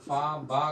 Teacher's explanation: हमारे दोनों ओठ जो हैं वो एक दूसरे को स्पर्श कर रहे हैं। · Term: द्वयोष्ठ व्यंजन